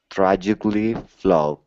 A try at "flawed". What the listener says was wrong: Okay, now here we need a D sound at the end. Instead of saying flow, it's flaw with an ah sound. Flawed. Flawed.